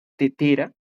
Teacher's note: la punta de la lengua se acerca un poco a los dientes, no los dientes de abajo, sino los superiores, los que están arriba